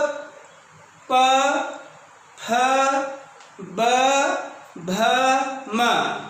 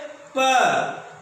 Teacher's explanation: दोनों ओष्ठ आपस में टच हो रहे हैं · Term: ओष्ठ वर्ण